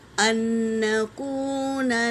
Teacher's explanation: تشدید والا نون بڑا ہے، 2 بار پڑھا جاتا ہے